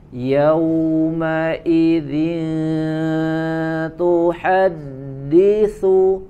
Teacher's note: sempurnakan huruf waw di situ, lin lembut suaranya, kemudian dimanyunkan bibirnya.